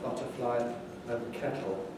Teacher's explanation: Glottal articulation replacing alveolar articulation for T in various positions at the end of words